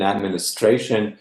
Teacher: in administration, the stress is in the penultimate